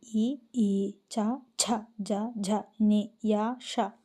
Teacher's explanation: తాలు అంటే దవడల నుండి పుట్టిన వర్ణములను తాలవ్యములందరు